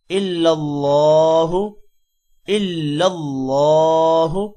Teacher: اللہ کا نام موٹا ہوگا اور ہا کو لمبا نہیں کرنا کیونکہ ہا پر پیش ہے۔